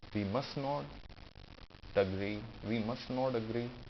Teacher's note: We must not, you can comfortably drop T